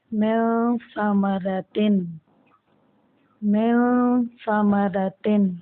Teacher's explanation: نون پہ غنہ کرتے ہوئے اسے اخفا کے ساتھ پڑھیں گے، ٹھیک ہے، یعنی چھپا کے پڑھیں گے